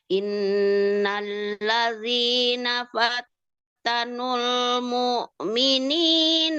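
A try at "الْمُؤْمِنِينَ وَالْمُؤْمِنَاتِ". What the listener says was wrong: mukmininnya belum naik, Bu. Baru naiknya di sini, mukminati.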